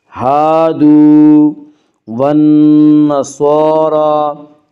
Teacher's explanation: نون مشدد ہے، غنہ ہوگا، غنہ کی مقدار 1 الف ہے۔